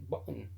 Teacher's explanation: the vocal folds are firmly pressed together the airstream is stopped completely we have a glottal stop